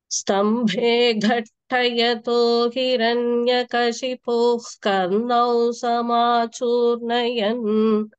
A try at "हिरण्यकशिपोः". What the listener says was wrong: Okay, first time வந்து அந்த sound கேக்கல. இந்த விசர்க்கம் வந்து ஃபர்ஸ்ட் டைம்.